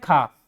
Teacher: अब क को उच्चारित करते समय हमने क कहा और ख को उच्चारित करते समय हमारे मुख से अधिक समय लगा। अधिक वायु निकली। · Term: महाप्राण